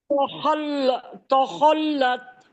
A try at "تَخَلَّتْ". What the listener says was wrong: تو نہیں، تا کو تو نارمل پڑھنا ہے، خو کو موٹا پڑھنا. تخو. خو تخل.